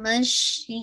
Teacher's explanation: मश शीन पे आपकी आवाज फैलेगी